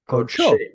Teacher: And when we add the pronominal suffix, that short O vowel, which was originally a short U vowel, comes back. Yeah, And because the accent moves. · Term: kamatz katan